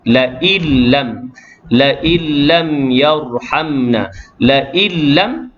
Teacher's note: Tetapi hukum bagi idgham bila gunnah memasukkan nun tu, la illam yarhamna, la illam. Jadi nun tu macam tak ada. Bila lafaz, bila kita baca, nun tu tak ada. · Itu yang dari sudut idgham memasukkan Allahumma salli Muhammad nun mati ke dalam huruf yang selepasnya, huruf lam tanpa dengung